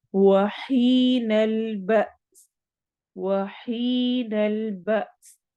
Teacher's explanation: ب جھٹکا دیتے ہوئے ہم نے سین سے ملانا ہے۔